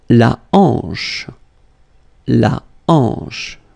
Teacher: La hanche. Remember, H here is not pronounced, so you get the sound en, hanche, at the beginning.